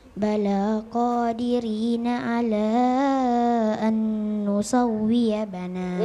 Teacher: Ditahan 2 ketukan. Nun sukun bertemu dengan nun tasydid, ya. Jadi itu harus didengungkan, ditahan selama 2 harokat atau 2 detik